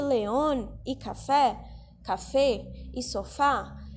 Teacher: Então, por que león e café e sofá tem acento? Porque, león, café e sofá tem a última sílaba mais forte. Elas são palavras agudas em espanhol.